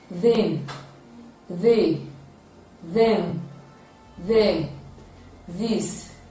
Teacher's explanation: It is a voiced dental fricative sound with the spelling th spelling.